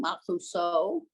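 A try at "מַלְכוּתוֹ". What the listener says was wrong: Because well, there's no stop in Sephardic Hebrew. It's always a toe. It's always toe. It's always to. Not in Sephardic. Okay, that's one of the big differences.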